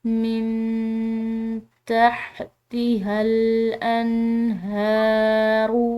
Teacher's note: نون ساکن ہے، اس کے بعد تا ہے جو کہ حروف اخفا میں سے ہے، تو اس کو ہم نے مخفی کر کے پڑھنا ہے